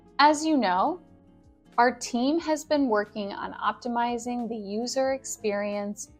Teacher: you'll notice that my intonation goes up a little bit when there's a phrase with a comma